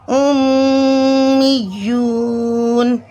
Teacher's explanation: حالت وقف میں نون کا زبر ختم ہو جائے گا، نون پر جزم لگ جائے گا، وقف بنے گا وقف بالاسکان۔ · یا پر تشدید ہے تو یا کو ہم مضبوطی اور جماؤ کے ساتھ پڑھیں گے تشدید کی وجہ سے۔